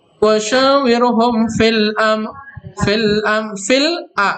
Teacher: hukum bacanya disebut dengan alif lam qamariyah ya, lamnya dibaca jelas.